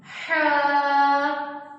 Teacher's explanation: इस हा को हरूफे हल्की भी कहते हैं, इसलिए क्योंकि ये इसकी अदायगी हलक से होती है।